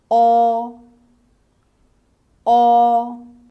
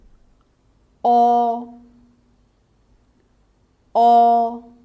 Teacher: the opening of your mouth is medium the tongue position is mid-high and slightly to the back